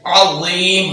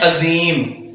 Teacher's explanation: ये बगैर सीटी के और पुर पढ़ा जाएगा। अज़ाबुन अज़ीम, अज़ीम पुर और बगैर सीटी के अज़ीम।